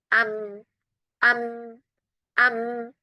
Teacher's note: kalau kita ucapkan mim sukun, hidungnya ditutup enggak keluar dia mimnya